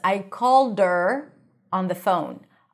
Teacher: If you say it quickly and the her is not pronounced, you can drop the H.